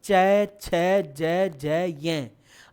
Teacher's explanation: अच्छा, पूरी जीभ ऊपर तालु से टकराए तो च वर्ग उच्चारित होता है, तालव्य वर्ण